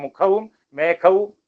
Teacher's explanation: മലയാളികൾ ഘോഷം പറയില്ല, മലയാളികളുടെ ഉച്ചാരണത്തിൽ അതില്ല. അതിഖരമായിട്ടാണ് ഘോഷത്തെയും മലയാളികൾ ഉച്ചരിക്കുക. മുഖവും മേഘവും ഒന്ന് തന്നെ നമുക്ക്.